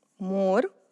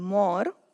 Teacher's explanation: And this would indicate more than one. So this is singular, more, closed sound, and more is plural with open sound.